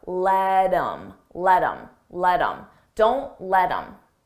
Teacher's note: I take that H off of him, I drop the sound, and then I'm left with im, but I combine it with the word before.